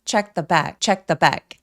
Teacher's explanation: 이렇게 자음이 너무 많이 나열된 경우는 중간에 오는 티발음을 쏙 삭제해서